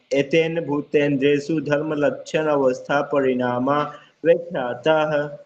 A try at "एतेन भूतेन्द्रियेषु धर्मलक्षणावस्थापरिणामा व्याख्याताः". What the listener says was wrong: धर्म लक्षण अवस्था नहीं बोलना, धर्म लक्षणा बोलना, लक्षणावस्था।